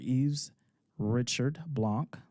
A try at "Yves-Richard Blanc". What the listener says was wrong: And it's the S is silent. So it's Eve, just like Christmas Eve. Yves-Richard Blanc.